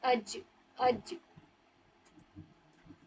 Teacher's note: जिम में जब भी इस पर जज्म आपको लिखा हुआ मिले तो आप इस पर झटका करेंगे